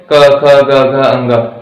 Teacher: क ख ग घ अंग मेरे गले से निकल रहा है।